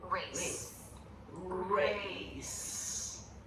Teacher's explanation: So there's a lot of lip rounding for a beginning R.